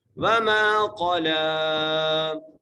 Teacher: میم کو ایک الف مقدار کھینچ کے پڑھنا ہے، قاف کو موٹا کر کے پڑھنا ہے اور لام کو بھی ایک الف مقدار کھینچ کے پڑھنا ہے۔